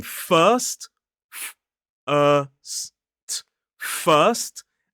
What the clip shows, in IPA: fɜːst